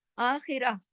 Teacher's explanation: اور پھر میں یرید الآخرہ، آخرہ، اب یہ دیکھیے کہ تا جو ہے وہ ہاں میں بدل گیا، جو تا مربوطہ ہے وہ ہاں میں بدل جاتا ہے جب ہم اس پر رکتے ہیں. پھر سما کے میم کے اوپر تشدید ہے، اس کو زور دے کے غنہ کرتے ہوئے اکمل غنہ سما کرتے ہوئے آگے بڑھتے ہیں.